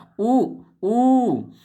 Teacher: तो इनका होठ से आता है देखिए होठ गोले गोले हो रहे हैं कि नहीं हो रहे हैं आप बोल के देखिए होठ गोले